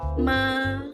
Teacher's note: first tone, flat and high